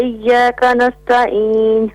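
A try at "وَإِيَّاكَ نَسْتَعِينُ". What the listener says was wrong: وإياك نستعین. نستعین تا کی جگہ تو نہیں پڑھنا, تا کو تا ہی پڑھنا ہے. نستعین.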